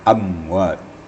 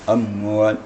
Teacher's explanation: Sebelum membaca waw, bibir kita sudah dikendorkan agar jangan mim itu mentul lagi. Kalau bibir kita masih diketupkan menjelang baca waw, ya, maka mim itu akan mengantul dia sedikit. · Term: izhar syafawi